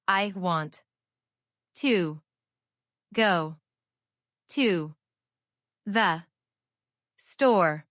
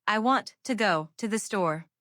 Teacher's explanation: The words to the become tiny. They almost disappear.